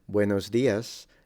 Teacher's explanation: the S at the end is a bit in between the sh and the S frontal so it's kind of in between it's a retracted s